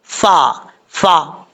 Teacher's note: نو، تو نو، فَأَزَلَّهُمَا الشَّيْطَانُ، یہاں پر فا کا مخرج ہے، اوپر والے دانتوں کا کنارہ نیچے والے ہونٹ کی تری والی جگہ پہ لگے گا تو یہ فا پڑھا جائے گا، اس کو ہونٹ گول کر